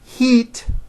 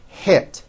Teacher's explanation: think of the sound e as in heat as being high up and it as in hit as being a little bit lower